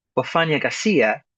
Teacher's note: I'm accenting a little bit stronger the f a, the fa, at the beginning.